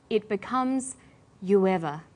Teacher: You ends with oo, a high back vowel, so it links with linking type 2, the w sound.